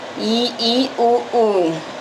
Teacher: जिनका उच्चारण करते समय मुंह पूरा बंद रहता है। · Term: समृत स्वर